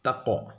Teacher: حروف قلقلہ کے 5 حروف میں سے قاف ہے، قاف پر جزم ہے، یہاں پر قاف کی آواز ٹکر کھا کر الگ ہو جاتی ہے، اس کو قلقلہ کہتے ہیں